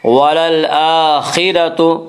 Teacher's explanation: خا کو پر پڑھیں گے، خا حروف مستعلیہ میں سے ہے